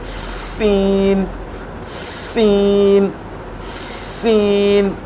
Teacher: सी भी उन हुरूफ में शामिल है जिनके अंदर सीटी की आवाज़ आती है